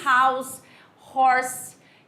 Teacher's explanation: você tem esse H com esse som de R